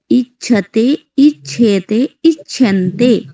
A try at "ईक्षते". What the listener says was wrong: इच्छते, इच्छेते एवं न, इच्छन्ते, इच्छेते, यानी थोड़ा सा दीर्घ आपको करना है, द्विमात्रा काल।